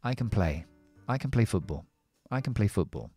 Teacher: el can es algo que vamos a siempre decir muy rápido un afirmativo con la schwa y pegado a este verbo